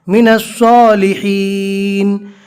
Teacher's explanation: صاد کو تھوڑا موٹا اور پور پڑھیں گے